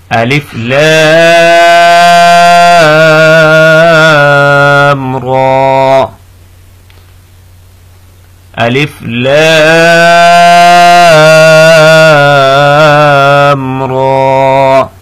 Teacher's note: لام جو ہے ہم نے تقریباً اس کو 3 سیکنڈ کے لیے کھینچنا ہے، اور را کو 1 سیکنڈ کے لیے کھینچنا ہے۔